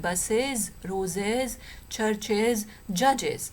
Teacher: we have ch, a voiceless sound, but we have j here, a voiced sound